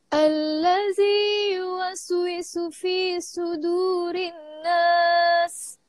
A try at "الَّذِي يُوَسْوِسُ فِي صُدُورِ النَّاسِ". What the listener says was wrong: Dengung juga rinnas.